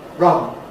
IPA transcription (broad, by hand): rʌn